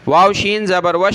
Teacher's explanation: वाव को शीन के साथ मिलाया, शीन के ऊपर ही तशदीद है तो जमा कर पढ़ना है इसको